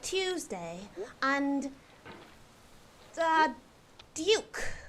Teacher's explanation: the proper inclusion of an IU sound on words like Tuesday and Duke